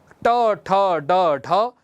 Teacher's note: मूर्धा का सहारा लेकर के जो वर्ण उच्चारित होते हैं उसी को हम मूर्धन्य वर्ण बोलते हैं